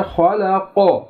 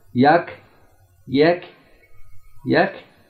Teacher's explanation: क़ाफ मोटी आवाज़ है बोल्ड है और भारी आवाज़ है, ठीक है, जबकि काफ की आवाज़ बारीक है